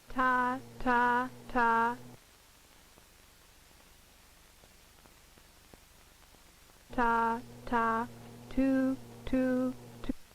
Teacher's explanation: For the sound T, the tongue tip must contact the alveolar ridge. However, the posterior portion of the tongue is relatively free to approximate its position for the following vowel.